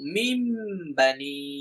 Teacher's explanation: নুন সাকিনের পরে যদি ইকলাবের হরফ বা আসে তাহলে ওই নুন সাকিনকে মিম দ্বারা পরিবর্তন করে পড়তে হয়।